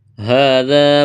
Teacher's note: کڑا زبر ہے، الف کے برابر کھینچنا ہے، ذال کو نرم کرنا ہے، الف مدہ ہے۔